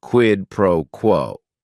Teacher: word is only one syllable and if you're saying it together the stress is kind of on that first word and that last word